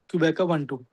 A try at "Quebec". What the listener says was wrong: Again, you're saying Quebeca. This is so wrong. Quebec.